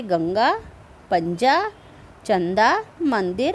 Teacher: इनके उच्चारण में हवा केवल नाक से निकलती है, इसका उच्चारण अधिक जोर से होता है। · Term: अनुस्वार